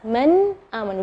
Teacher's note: Nun sukun ketemu dengan hamzah. Maka bacanya nunnya yang jelas.